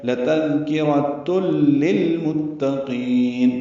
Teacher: تنوین کے بعد لام آنے کی وجہ سے تل میں ادغام کامل ہوا ہے